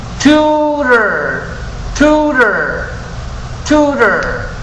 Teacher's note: Si escuchan el aire después de la T, así es como se pronuncia la T en inglés. Como en tutor, tutor, tutor.